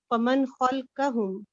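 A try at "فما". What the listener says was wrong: मन है ये फमा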